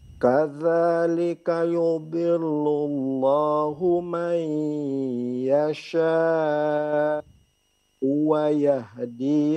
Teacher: Terus hamzahnya dicoba lebih dijelaskan. Hamzah yang di yasha.